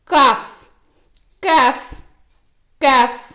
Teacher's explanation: இது ஹப் உடைய மஹரஜுக்கு சற்று முன்னதாக உச்சரிக்கப்படுகிறது.